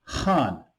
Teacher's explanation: pronounced with the fourth downward tone